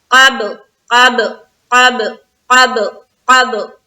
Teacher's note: یہاں پر ہم کر رہے ہیں اخفا کا قاعدہ، یعنی کہ ناک میں آواز کو چھپائیں گے. اس کے بعد قاف کو با سے ملاتے ہوئے ہم کریں گے قلقلہ